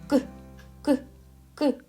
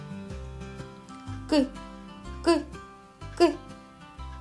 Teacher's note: Його не можна ні потягнути, ні проспівати. Він ніби вибухає. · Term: приголосний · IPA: [к]